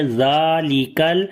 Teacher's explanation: ذال کو نرم پڑھیں گے اور اس کے اوپر کھڑی زبر ہے، لمبا بھی کریں گے. ذالک، کاف کو باریک پڑھیں گے اور لام کے اوپر صفت توسط ہوگی، آواز کو ہلکا سا جاری کر کے پڑھیں گے.